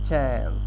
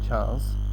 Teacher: the vast majority of Australian use the short a vowel from the word cat. Like in cat, you say a, so they say it chance.